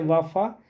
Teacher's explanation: दंतोष्ठ से व और फ